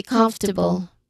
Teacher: even though the word has four syllables, we say comfortable. The stress is on the first syllable.